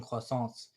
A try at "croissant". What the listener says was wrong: it's not croissant. We're not French. We're not speaking French. pronounce that in French, I demand you speak every other word with a French accent.